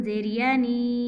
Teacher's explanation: नून को इसलिए लंबा किया है, या मद्दा आ रही है।